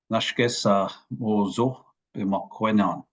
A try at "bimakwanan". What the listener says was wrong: Just the end, Bimakawan, the long wa there at the end. Bimakawanan.